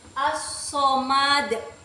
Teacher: hukum tajwidnya qalqalah kubro, karena ada dal yang diwakaf pada akhir kata. Cara membacanya itu dipantulkan keras